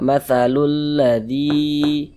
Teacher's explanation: maka huruf yang memiliki harokat kasroh ini dibaca panjang, sehingganya zi dibaca panjang. Mad tabi'i panjang 2 harokat.